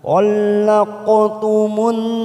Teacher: ada huruf qaf sukun namanya qalqalah sugro biasanya warna biru tua. Kita pantulkan.